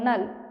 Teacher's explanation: এখানে নুনের উপর তাজদিদ অর্থাৎ ওয়াজিব গুন্না, আমরা গুন্নাহ সহ পড়ব।